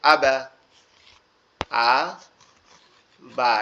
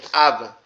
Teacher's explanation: কিন্তু কলকলার নিয়মের মধ্যে পড়ার কারণে উচ্চারণটা হবে কি আবা